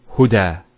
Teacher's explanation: So we say huda. There's the elongation as well, because the fatha followed by an alif.